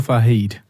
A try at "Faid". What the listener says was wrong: fade. It's just Fade. Fade. No, it's not Fahid. F-A-I-D. no H in there.